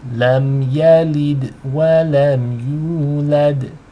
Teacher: Make sure you have u being twice as long, and the dal has qalqala. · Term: elongation